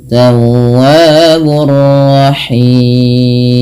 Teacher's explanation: Maka dinamakan mad arid sukun. Panjangnya boleh 2 harokat, boleh 4 dan boleh 6. Tapi kita ngambil yang 4 harokat. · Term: mad arid disukun